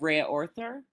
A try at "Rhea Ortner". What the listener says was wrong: Rhea Ortner, yep. H is silent, thank you.